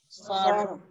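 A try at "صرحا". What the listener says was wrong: Ah, ra dulu baru ha. Okey, sekali lagi.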